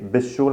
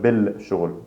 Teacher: b plus il plus sun letter, we skip the L sound